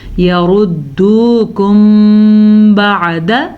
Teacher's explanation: میم ساکن کے بعد اگر حرف با آ جائے, نون ساکن کے بعد اگر حرف با آئے تو وہ اقلاب ہو جاتا ہے, جبکہ اگر میم ساکن کے بعد حرف با آ جائے تو اخفاء شفی کا قاعدہ ہوتا ہے, یعنی کہ یہاں پہ دونوں ہونٹوں کو بند کر دیتے ہیں اور غننے سے اس لفظ کو ادا کرتے ہیں